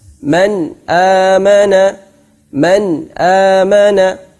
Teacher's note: bacaan nun sukun harus jelas-jelas artinya tanpa ada dengungan sama sekali Hai tidak dimasukkan ke mana-mana dan juga keluar dari maksudnya Nun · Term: izhar halqi